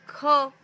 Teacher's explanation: जैसे क बोलोगे तो वाइब्रेशन हो रहा है क्या? नहीं हो रहा है। ख वाइब्रेशन नहीं हो रहा है। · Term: अघोष